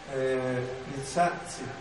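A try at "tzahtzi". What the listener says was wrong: Es decir, es una S fuerte con un leve fricativo delante. Casi sin T. Pero sin T.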